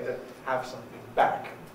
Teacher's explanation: so the nucleus goes on back